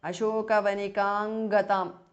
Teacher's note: Anuswara changes to nga.